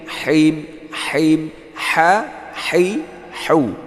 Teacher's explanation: Nah, pakai ha, ya, di tenggorokan yang tengah keluarnya.